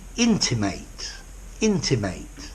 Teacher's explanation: notice the stress is on the mate